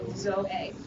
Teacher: omega eta is not a diphthong, so those are pronounced as two separate vowels